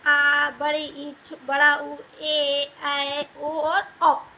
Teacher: दीर्घ स्वर जिनके उच्चारण में हास स्वर से लगभग दुगना समय लगता है